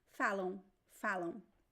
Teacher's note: you don't touch the lips it's not so you pronounce both vowels and the a is very nasal · So it is a diphthong sound. Even though there is no diphthong here, phonetically it is a diphthong, a nasal diphthong.